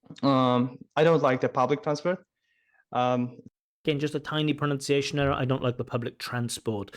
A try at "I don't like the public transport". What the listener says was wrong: Again, just a tiny pronunciation error. I don't like the public transport. So in that word public transport, those 2 words, public transport, the stress should be on transport, not public. Not I don't like the public transport, but I don't like the public transport. Just notice it again. It's very minor, but it is noticeable.